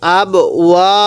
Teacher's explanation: এই বা এর মধ্যে এক আলিফ টান দিব